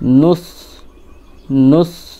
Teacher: জিভের আগা উপরের সামনের দাঁতের আগার সঙ্গে, মানে দুই দাঁতের উপরের সামনের দুই দাঁতের আগার সঙ্গে জিভটা লাগাবেন, আগা লাগাবেন।